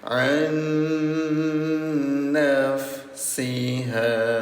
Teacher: Nun bertemu dengan nun namanya idghamunah. Dengungkan cara bacanya selama dua dua harakat atau dua ketukan.